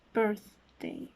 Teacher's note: its place of articulation would be an interdental sound since the tip of my tongue is almost in between my upper and bottom teeth